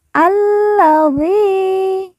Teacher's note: La yang bertasydid langsung ditekan, ditahan 2 harokat.